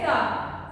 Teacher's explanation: सामने जो नोक है आपकी, वो जुबान की जो नोक है उसको सामने के ऊपर के दो दांतों के साथ मिलाना है। ठीक है, और उसको बोलना है सा।